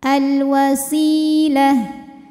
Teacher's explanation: alif lam menghadapi huruf qamariah yaitu wau maka lam dibaca jelas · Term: alif lam qamariyah